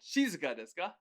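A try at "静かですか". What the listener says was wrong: You said it right, just that you had a weird intonation.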